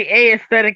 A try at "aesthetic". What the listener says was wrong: Why did you say A aesthetic?